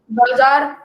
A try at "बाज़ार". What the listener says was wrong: बाजार, उसको उच्चारण भी वैसे ही करना पड़ता है, बाजार नहीं। बाजार कर रहे हो तो जा है, तो उसके नीचे तो है ही नहीं। बाजार, बाजार हो जाएगा। ज उच्चारण होता है, मैंने उच्चारण भी बताए हैं नुक्ता वाले उसके, नुक्ता वाले उसके वो भी बताए हैं।